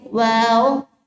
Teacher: वाव का हम पहले भी पढ़ चुके हैं कि होंठों को गोल करना है, आपस में मिलाना नहीं है और तब ये वर्ड अदा होगा